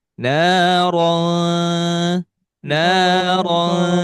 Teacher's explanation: di ro ini tidak dibaca ro tetapi didengungkan. Jadi ada bunyi eng.